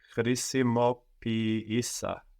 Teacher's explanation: So we have an I sound from the verb, χρησιμοποιώ, and an I sound from the is that we insert in the closed version of the verb. And these two vowel sounds are treated like two different syllables